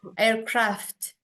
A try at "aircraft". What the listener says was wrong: Jadi ada F ada T-nya. Ya, aircraft. Jangan kebalik ya. F dulu baru T. Aircraft.